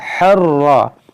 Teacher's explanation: را کو پر پڑھیں گے, زبر ہے